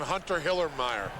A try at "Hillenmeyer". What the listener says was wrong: You got to say Hillenmeyer, not Hillemeyer. You can't be lazy in the pronunciation.